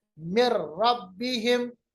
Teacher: हम ऐसे मिलाएंगे कि नून की जो आवाज है या गुन्ने की जो सिफत है वो खत्म हो जाए। मिर रब्बिहिम, आपको लगेगा जैसा कि नून है ही नहीं।